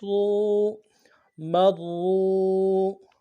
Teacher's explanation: واو مدہ ایک الف دار میں کھینچیں گے